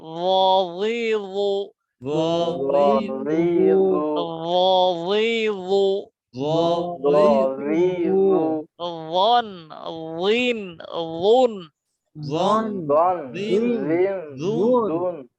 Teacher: জিহ্বার আগা দাঁতের আগা নরম আওয়াজ মোটা